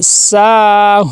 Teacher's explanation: آگے ساہون، سین کے آگے دیکھیں الف مدہ آ گیا ہے، سین کو ایک الف کے برابر لمبا کریں گے. آگے ہا کے آگے واو مدہ آ گیا ہے، ہا کو بھی ایک الف کے برابر لمبا کریں گے